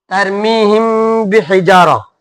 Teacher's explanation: آپ میم ساکین کے بعد با آیا تو یہاں پر کیا ہوگا؟ اخفا ہوگا.